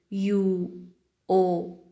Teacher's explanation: Rounded vowels are those during the production of which the lips are rounded, that is drawn together so that the opening between them is more or less round